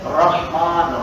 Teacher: را موٹا پڑھ رہے ہیں کیونکہ زبر ہے